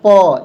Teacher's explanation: ऊपर और नीचे दोनों ओष्ठ को सटा कर ही हम प वर्ग को बोल पाते हैं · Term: ओष्ठ व्यंजन